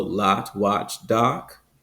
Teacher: in general American English it's that back open a sound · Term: back open ah sound